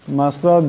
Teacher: এখানে দমসাল্লে দাল সাকিন হয়ে যাবে, দাল হলো কলকলার হরফ, তাই ওর সাথে টক্কর খাবে।